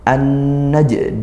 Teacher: kemudian jim sukun qalqalah dipantulkan